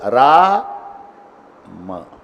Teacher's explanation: राच्या वेळेला उघडायचंच आणि मच्या वेळेला तोंड बंद कर.